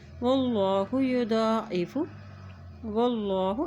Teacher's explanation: اللہ کا نام موٹا ادا کیا جا رہا ہے کیونکہ اللہ کے نام سے پہلے زبر ہے